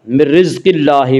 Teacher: من رزق اللہ میں اللہ کا لام باریک پڑھا جائے گا